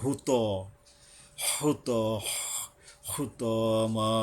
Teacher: হু ত, ত হইল আকার বলবো না, আমরা শুধু ত বলবো। উপরের মারির লম্বা যে 2টা দাঁত, ওইটা গোড়ায় গিয়ে তটা মেজবে।